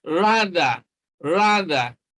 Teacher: th it is the voiced dental sound